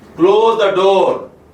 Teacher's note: Here the pitch is on the door, on the word door. Then the sense is that of a polite request.